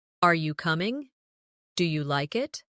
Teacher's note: In English, our voice usually rises at the end of a yes or no question. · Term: rising tone